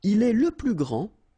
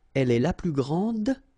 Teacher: Okay, so phonetically what you can hear is that this first form here for the masculine, grand, so you don't pronounce the final D, will be exactly the same as the plural form for the masculine, grand.